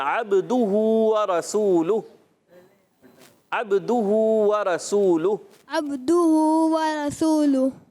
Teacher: अब्दुहु में बा में कलकला करेंगे